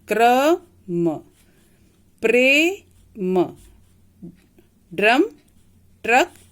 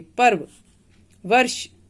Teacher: रेफ को जब हम बोलते हैं तो इसमें र की ध्वनि थोड़ी कम निकलती है